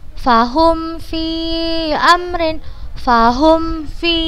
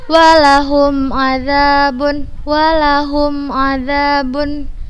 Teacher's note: Mim sukun bertemu dengan huruf fa, maka kita baca dengan jelas.